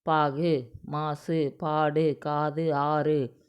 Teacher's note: வந்து அரை மாத்திரையா ஒலிக்கும் இங்க கொடுத்திருக்கிற எல்லாமே குற்றியல் உகர எழுத்துக்கள் தான் இது தனக்குரிய மாத்திரை அளவுல இருந்து குறைந்து ஒலிக்கும் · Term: குற்றியல் உகரம்